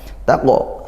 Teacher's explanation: qaf sukun, qalqalah sughra dipantulkan ya